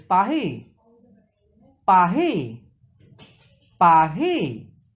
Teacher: pronounce in back of mouth roll like light gargling sound